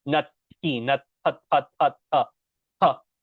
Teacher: The only difference there, if you notice, if I share my screen again and the way I wrote it, when we have the word nati, for instance, you'll notice there's an H in here. So at the end, we're going to have more of an H sound when we say that word, nati, almost like you're spitting.